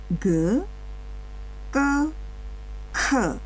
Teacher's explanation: yang pertama tadi ge adalah bunyi dengan tekanan biasa atau lembut yang kedua ke adalah bunyi yang kuat atau keras dan yang terakhir tadi ke adalah bunyi hentak aspiratif